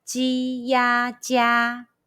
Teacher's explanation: Let's combine the initial ji, the final ya, and high pitch first tone all together.